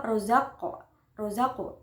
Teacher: huruf qof di tengah itu berharakat sukun asli Jadi dibacanya dipantulkan namun tidak terlalu kuat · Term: Qolqolah Sugro